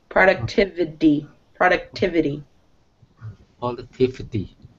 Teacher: So it sounds like a D actually at the end.